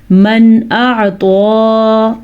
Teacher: اس لیے کہ جب نون ساکن کے بعد یا دو زبر دو زیر دو پیش کے بعد حروف ہلکی میں سے کوئی حرف آ جائے تو اس نون کو ظاہر کر کے پڑھتے ہیں، اسے اظہار کہتے ہیں